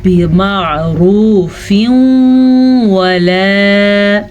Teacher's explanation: تنوین کے بعد یمون میں سے واو ہے تو ادغام بالغنہ کا قاعدہ ہو رہا ہے، اس لیے میں نے واو کو شد کے ساتھ پڑھا. ولا، اسے ولا پڑھنے کی غلطی مت کیجیے گا، اسے ہم نے پڑھنا ہے ولا الف مدہ کے ساتھ.